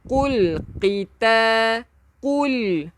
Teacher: Lam ni kita angkatkan lidah kita ke lelangit lah.